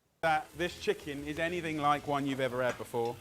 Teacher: Sometimes in this accent, H is not pronounced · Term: H dropping